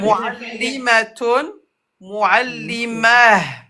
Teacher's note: Ta se prononce comme ha avec soukoun.